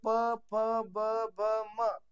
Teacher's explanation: त्याचा उच्चार ओष्ट म्हणजे वरचा ओट आणि खालचा ओट चिटकल्याशिवाय त्याचा उच्चार होत नाही